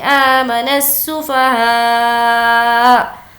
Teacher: یہاں پر اب ہمیں نون کو سین سے ملانا ہے, اس کے بعد ہا کو کھینچیں گے کیونکہ اس پر مد ہے, اور ہمیں یہاں پر وقف کرنا ہے تو حمزہ پر ہم جزم دے دیں گے.